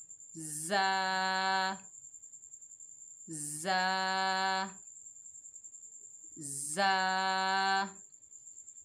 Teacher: ज़बान की नोक को सनाया सुफला के किनारों से लगाएं और सख्ती से अदा करें।